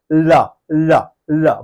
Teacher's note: বলার সময় দুই পাশ দিয়ে বাতাস বের হচ্ছে, মাঝখানে জিহ্বাটা দন্তে ঠেকে যাচ্ছে। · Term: পার্শ্বিক ধ্বনি